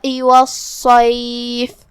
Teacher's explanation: آخری میں ہم فا پہ روکیں گے تو اس پہ جزم سے روکیں گے، لہذا ہمیں فا کو ظاہر کرنا ہے